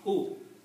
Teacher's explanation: So you just pronounce oo. Don't stretch oo, otherwise you bring the sound of wow in it